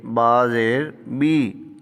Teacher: تو با کے نیچے جب زیر آئے گی تو اس کو باریک کر کے پڑھیں گے، با زیر بی، با زیر بے نہیں پڑھنا، با زیر بی، تو یہ بنے گا وابی ہم۔